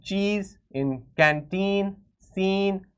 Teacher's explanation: For example, in cheese, in canteen, scene, we know that we are prolonging, we are stretching the sound of the E, we are making it into a longer vowel